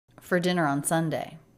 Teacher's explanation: All of these words are connected with no break.